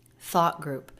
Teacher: there is a very quick stop for the stop T, but the energy of the voice keeps going.